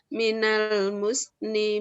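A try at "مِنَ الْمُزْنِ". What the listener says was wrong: Kalau terlalu maju, suara S-nya yang dominan. Muz, ya. Bukan mus. Bukan mus. Coba minal muzni.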